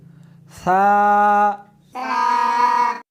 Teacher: اس حرف کو زبان کو دونوں دانتوں کے درمیان رکھ کر پڑھیں گے